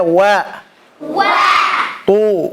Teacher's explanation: Jadi wawnya tipis kemudian to-nya tebal.